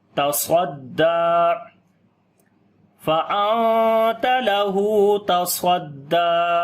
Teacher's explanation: صاد کو موٹا پڑھیں گے حرف استعلا کی وجہ سے